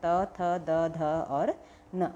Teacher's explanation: दंत से आपका त वर्ग आएगा ल आएगा